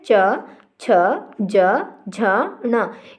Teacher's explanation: इन सभी वर्णों के उच्चारण में क्या हो रहा है? जीभ हमारे तालु को स्पर्श करती है।